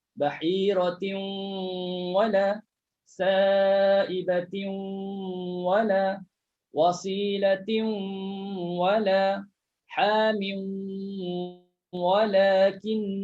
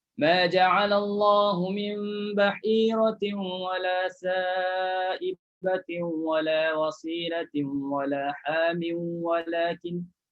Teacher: Sebab dia hukum idgham al-ghunnah. Masukkan tanwin dalam waw berserta dengung.